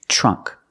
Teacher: we see the TR making the CH sound